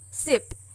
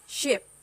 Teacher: If you feel us and a sh, us and a sh, you can feel there's a difference in how forward you are. S as in sip is on the alveolar ridge, while sh as in ship is a little bit behind.